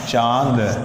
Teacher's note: जाता है अनुस्वर नाक की सहायता से बोला जाता है जबकि अनुनासिक जो है नाक और मुंह दोनों मिला करके बोला जाता है